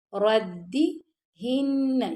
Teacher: بی را موٹا پڑ جائے گا، دال باریک پڑ جائے گا ، ردی ہن، یہاں پہ ہم غنہ کریں گے نون پر،